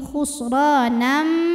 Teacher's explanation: Kemudian ada hukum idgham bi gunnah karena ada tanwin fathah yang menghadapi huruf mim. Maka bunyi tanwinnya masuk ke mim. Khusranam disertai bunyi dengung.